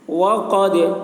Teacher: दा में कलकला होगा, यानी दाल की आवाज़ डबल निकलेगी